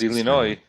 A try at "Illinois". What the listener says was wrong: no it's the s is silent it's illinois